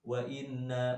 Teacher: termasuk bacaan Idgham Bighunnah ya yang dibaca dengan suara dengung